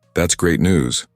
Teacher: your voice rises in excitement